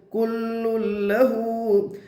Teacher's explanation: काफ के ऊपर पेश है, पेश को जल्दी पढ़े, थोड़ा भी न खींचे। मारूफ पढ़े, मजहूल आवाज से बचे। लाम के ऊपर तशदीद है, तशदीद वाले हर्फ को 2 मरतबा पढ़ते हैं, एक बार पहले हर्फ से मिलाकर और एक बार खुद से।